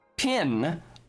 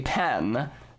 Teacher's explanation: people with this merger in their accent don't hear i and e as separate sounds